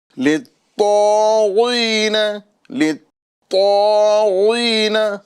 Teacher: یہاں پر طا کو ہمیں پر بھی کرنا ہے اور ساتھ ہی ساتھ اس میں قلقلہ مشدد والا کرنا ہے